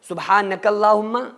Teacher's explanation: لیکن اگر کاف کو اللہم کے لام کے ساتھ ملا رہے ہیں تو پھر سبحانک اللہم، سبحانک اللہم، کیونکہ لام کے اوپر تشدید ہے تو جو کاف ہے وہ لام کے ساتھ مل جائے گا